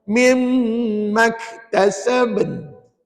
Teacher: di hujung tu jangan lupa dia bunyi nun. Nun tu bila kita wakaf dia jadi mati. Maka bunyinya an.